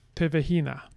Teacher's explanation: So, Tomo Sina, going to turn into Tovo Hina, which is going to turn into Tevehina, which is going to get stress shifted over to Tevehina. And we're going to have secondary stress on this first syllable.